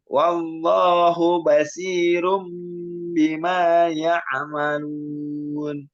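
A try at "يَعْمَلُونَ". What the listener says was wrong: Jangan ya'a, bukan ya'a tapi ya'malun. Jangan sampai dikolok-kolahkan menjadi ya'a, nanti ya'.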